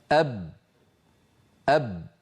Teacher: فالباء شديدة يعني لا يجري الصوت معها، مجهورة يعني لا يجري النفس معها